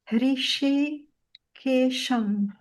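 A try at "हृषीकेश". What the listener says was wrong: But the first one, Hrishi, more of a sh. Hrishi.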